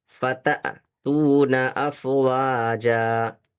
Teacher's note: الف کے اوپر جب بھی جزم آ جائے گا کسی حرف کے ساتھ، تو اس کو جھٹکا کے ساتھ پڑھا جائے گا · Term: حمزہ